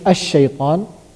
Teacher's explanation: lam shamsiyah means we're not pronouncing the lam, since sheen came after lam, right? Because of the sheen, because of the letter that coming after lam, that sheen, because of that sheen, we are not pronouncing this lam. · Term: lam al-shamsiyah